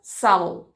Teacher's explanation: tem ainda mais uma consoante lateral velarizada